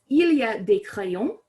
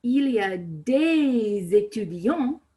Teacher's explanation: when it's followed by a word that has a vowel at the beginning you start pronouncing that s as the liaison and it becomes that z sound